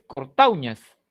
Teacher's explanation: la mayor fuerza de voz en este primer caso, en cortauñas, no está en la U, está en la A.